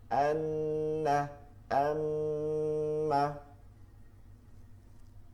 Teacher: বাুবি 17 number মাখাজ নাকের বাসি থেকে গুনাহ উচ্চারিত হয়। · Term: গুন্নাহ